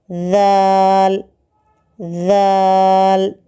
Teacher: زبان کی نوک کو اوپر کے درمیانی 2 دانتوں کے کنارے کو اس طرح لگائیں کہ زبان کی نوک ذرا سی باہر نکل آئے تو ذال نکلتا ہے